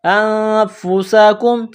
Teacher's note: تا نون زبر تن، سین واو زبر سو، تنسو، نون زبر نا، تنسون بالبر وتنسون انفسکم، حمزہ کو نون کے ساتھ ملانا ہے۔ نون ساکن کے بعد فا ہے، حروف اخفا ہے تو آواز ناک میں چھپائیں گے۔ انفسکم، سین کو باریک کرنا ہے، کاف کو میم کے ساتھ ملانا ہے۔